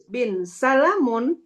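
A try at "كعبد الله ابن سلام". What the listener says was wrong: Sebenarnya ini bin ini bacanya ibnu. Coba ini ibni dibaca. Ini kan dihilangkan alifnya karena dia alam.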